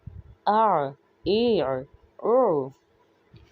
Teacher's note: عین کو پڑھتے ہوئے ہم اس بات کا خیال رکھیں گے کہ عین میں آواز کو وسط حلق سے ہی ادا کرنا ہے، کیونکہ عین صفت کے لحاظ سے ضعیف ہے، یعنی کہ کمزور ہے، اور حمزہ میں سختی پائی جاتی ہے.